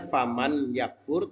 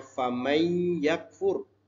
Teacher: Jadi tulisannya faman yakfur, tapi bacanya famay yakfur. Termasuk idgham bi gunnah.